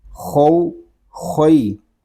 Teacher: خا یہ حروف مستعلیہ میں سے ہے, اس کو پر بھی پڑھیں گے